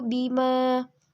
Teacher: alif dan setelahnya tidak bertemu dengan Hamzah sukun wakaf dan tasydid cara membacanya itu panjang 2 harokat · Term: Mad Thobi'i